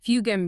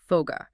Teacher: Following the hereditary spoken path of the masses, the hard, unvoiced C-K sound in fugem finds itself trapped between two vibrating vowels. To save energy, the vocal cords just keep vibrating through the consonant, voicing it into a soft G.